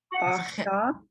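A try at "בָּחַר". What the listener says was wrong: It's a chet. Blended.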